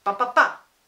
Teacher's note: That's actually a 3-beated foot. It's an unstressed syllable, followed by another unstressed syllable, followed by a stressed syllable, and it's called an anapest.